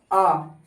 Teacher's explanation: बिना मुंह खोले देखो छोटी इ बड़ी ई ए ऐ इत ना आसानी से बोलते है नहीं जीवा के मध्य भाग बोले जाते हैं वो होते हैं आ मुख खुला ना आधा जीभ के बीच वाले हिस्से से आवाज आ रही है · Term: मध्य स्वर